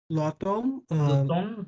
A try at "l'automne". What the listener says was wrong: luton luton luton m silent luton